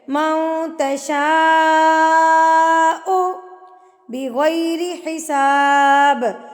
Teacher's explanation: ب ہلا کے پڑھنا ہے تھرتھراٹ سے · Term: قلقلہ